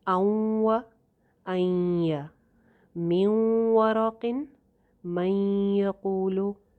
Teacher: واو اور یا کے ساتھ ادغام کرتے وقت نون کی آواز تھوڑی سی باقی رہ جاتی ہے، تھوڑی سی سلائٹ سی، اسی لیے آپ کو ایرو جو دکھائی دے رہا ہے جو جمپ کر کے واو کے ساتھ جا رہا ہے، وہ زگ زیگ کر کے نون کے ساتھ اس کی تھوڑی سی ملاوٹ ہوئی ہوئی ہے۔ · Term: ناقص ادغام